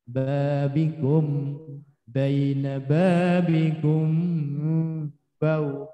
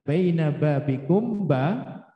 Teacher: Tapi ketika baina babikum ba, mim sukun bertemu ba, ini ikhfa syafawi. Nah, ikhfa syafawi itu tapi tidak boleh rapat. Masih ada renggangnya dikit.